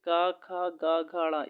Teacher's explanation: ये कंठ का स्पर्श करते हैं दोस्तों